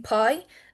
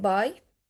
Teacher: English has two bilabial plosives that we pronounce with our two lips. They are voiceless p as in pie and voiced b as in buy.